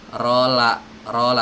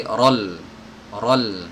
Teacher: rola tapi Rol Rol nah ketika masuk ya ketika masuk maka ketebalan huruf ro ini seketika harus berhenti dan beralih ke lam yang harus dibaca tipis